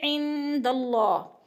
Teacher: نون ساکن کے بعد دال حروف اخفاء میں سے ہے تو ادھر اخفاء ہوگا، ناک میں آواز لے جائیں گے ، عند اللہ، اللہ کو پر پڑھا جائے گا، اس لیے